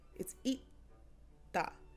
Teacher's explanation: There's no air coming out after you say the T sound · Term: not aspirated